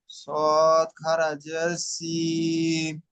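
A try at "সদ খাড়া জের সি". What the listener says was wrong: প্রত্যেকটা অক্ষরের শেষ এই টান দেওয়ার শেষে মিম পড়ছেন, মিম হবে না। সি, সৎ খাড়া জের সি।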